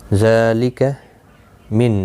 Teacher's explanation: نون ساکن کے بعد حروف حلقی کا حمزہ آیا ہے، اظہار حلقی ہوگا، گناہ نہیں ہوگا۔ یہاں نون کے بعد، نون ساکن کے بعد متحرک با آیا ہے، یہاں پر قلب ہوگا، چھوٹا سا میم کتنی آپ دیکھ رہے ہیں، اخفاء شفوی ہوگا۔